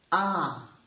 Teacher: third one is ah this sounds a little bit higher yep it is higher and it has some breathiness and we call it the high tone